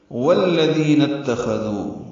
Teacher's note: واو لام سے ملا دیں گے، دال نرمی سے پڑھیں گے ، ذی یا مدہ ہے، 2 حرکات لمبا کریں گے، من